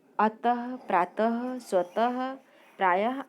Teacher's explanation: हिंदी में विसर्ग का उच्चारण समाप्त हो चुका है, इसे भी ह व्यंजन के रूप में ही उच्चारित किया जाता है